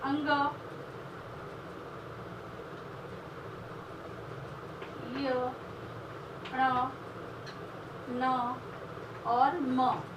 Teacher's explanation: व्यंजन के उच्चारण में हवा नाक से निकलती है, नाक से निकलती है, इसलिए इन्हें नासिक्य या अनुनासिक व्यंजन कहते हैं